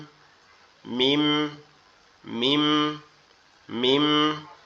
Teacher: এটা আমাদের 2 ঠোঁট একত্রে লেগে, 2 ঠোঁটের নরম জায়গা, এই জায়গা এই জায়গা এই জায়গা এই জায়গা একসাথে লাগবে, লেগে উচ্চারিত হবে মিম।